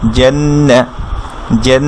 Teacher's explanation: তাজদিদ মানে এখানে একটা সাকিন লুকিয়ে আছে, কি ধরে ফেলবে, এর আগের সাউন্ডটা নুন তাজদিদ ধরে ফেলবে, জেন একটু নেজাল সাউন্ড হবে, অর্থাৎ নাকে আওয়াজ করে আমরা পড়বো